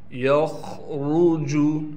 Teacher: ख़ा को हम यहाँ मोटा करके पढ़ेंगे, रा को भी मोटा पढ़ा जाएगा।